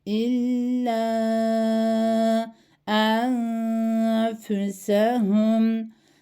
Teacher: Cezmine olanından sonra da f harfi geldiği için buradaki tecrü kuralı ihfadır. Yani cezimli olan nunu gizliyoruz.